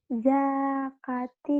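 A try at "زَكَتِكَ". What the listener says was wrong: Pendek zaknya. Yang panjang kaknya doang.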